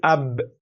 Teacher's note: the sound when you say ab ends in ash-shafatan, and that's the lips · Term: point of articulation